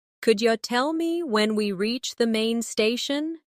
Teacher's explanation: Notice how could you becomes couldja.